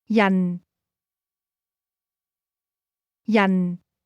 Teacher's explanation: This word is pronounced with a falling tone.